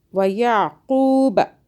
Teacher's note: عین کو حلق سے اور قوف کو موٹا پڑھیں